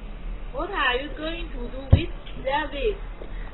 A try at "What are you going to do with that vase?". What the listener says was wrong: With ▁咬 舌 好 不 好 ？ ▁With ▁咬 了 吗 ？ ▁With ▁上 齿 咬 下 ， 把 舌 头 放 在 上 齿 和 下 齿 中 间 。